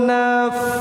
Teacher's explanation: gigi atas dengan bibir bawah ujung gigi atas atas dengan bibir bawah ada anginnya dialirkan angin itu satu harakat juga. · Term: huruf fa